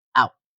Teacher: Finally, in form 4, we see at the very end of the phrase the word thought uses an unreleased stop, thought, or a varying glottalization, while the final t in out completely resolved into a sharp glottal stop, out.